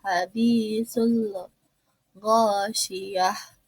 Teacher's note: alif lam bertemu dengan goin, dibacanya itu alif lam komariah, yaitu alif lamnya dibaca jelas